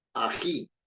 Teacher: ají no ají no el tono predominante está en la última sílaba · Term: sílaba tónica